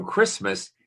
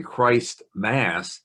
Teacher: is the mass of christ so it's really christ's mass but the vowels have been what we call flattened or elided